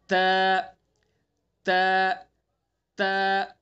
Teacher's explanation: ता को अदा करेंगे, जबान की नोक को सना उलिया की जड़ पर लगाएंगे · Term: ता का मखरज